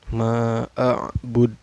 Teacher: Cara bacanya dipantulkan, dan pantulannya besar ya, kubro.